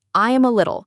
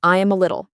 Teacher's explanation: The words I am and a all flow into one sound. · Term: link